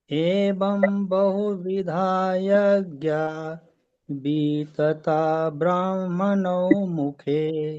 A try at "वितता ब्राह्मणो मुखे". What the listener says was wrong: वितता वितता नहीं है। वी छोटा है, ह्रस्व है। आप इसको दीर्घ बोल रहे हैं। वितता ब्रह्मणो बोलते हैं, वितता नहीं है ये, वितता ब्रह्मणो मुखे। वितता नहीं, वितता ब्रह्मणो मुखे। वी को लंबा नहीं खींचना है, वितता।